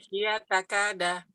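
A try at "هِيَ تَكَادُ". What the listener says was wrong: Takadu. Domah. Kan mudhari, domah semuanya. Ya, kecuali kalau ada naknya sama ni gitu.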